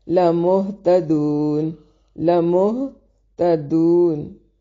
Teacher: سارے لفظوں کو باریک پڑھیں گے، دو واو مدہ ہے اس لیے وقف کی صورت میں مد کر کے پڑھ سکتے ہیں